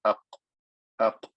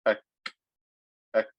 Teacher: It's also hitting at the top of the mouth, but it's slightly more forward than where the qaf was. The qaf was more back, the kaf is more in front.